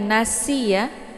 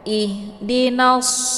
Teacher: Jangan dibaca tipis. Shad, ini huruf shad dibaca tebal, lebih ke o sedikit ya, tapi bukan o ya.